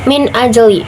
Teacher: Cara bacanya nun mati dibaca jelas seperti min bukan ming. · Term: izhar holki